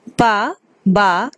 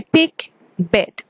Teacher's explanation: Pa and ba are bilabial sounds because both lips are used there.